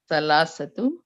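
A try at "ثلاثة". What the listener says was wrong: No, not the time marbuta. Thalathu.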